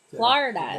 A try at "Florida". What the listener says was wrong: Florida. F-L-O instead of F-L-A. No, it's not.